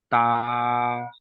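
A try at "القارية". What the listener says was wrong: এটা তা না এটা ক আলিফ জবার ক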